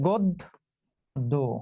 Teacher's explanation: এই যে পরের বর্ণে জ ফলা আছে, পরের বর্ণে জ ফলা থাকায় গ এর সঙ্গে যে অ ছিল সেই অটা এখন ও হয়ে যাবে, তাহলে উচ্চারণ হবে গদ্য।